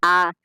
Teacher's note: और विवृत स्वर क्या होता है जिन स्वरों के उच्चारण में मुख पूरा खुला हो